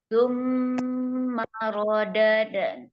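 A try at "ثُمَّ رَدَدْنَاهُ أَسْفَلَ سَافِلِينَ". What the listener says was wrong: Jangan dada. Kita suaranya terbuka, kita suaranya longgar aja.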